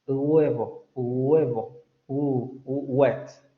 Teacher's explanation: no es una U ni es una G, está a la mitad de esas dos articulaciones. · Vean cómo la lengua sube hacia la parte velar, pero los labios se redondean como si fuera a pronunciar una U. Pero vean, no estamos entre la U, porque no estamos pronunciando U, y entre la G, huevo, huevo, wet. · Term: Aproximante